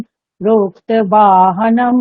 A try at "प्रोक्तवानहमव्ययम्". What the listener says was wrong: নহম, হনম নয়, নহম। প্রোক্তবান অহম অব্যয়ম, নয় হলন্ত আর অকার মিলে ন, ঠিক আছে। প্রোক্তবানহম অব্যয়ম।